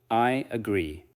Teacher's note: The connection may feel like a gentle Y movement.